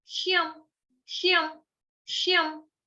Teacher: गलती से शम हो जाता है, शम हो गया तो मतलब हमने य को स्किप कर दिया, य हम खा गए, लेकिन य को खाना नहीं है।